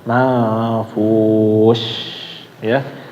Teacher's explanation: Jadi harus benar-benar disebarin suaranya manfus ya. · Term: shin